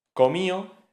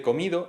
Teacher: Dental oclusivo sonoro, exactamente la D.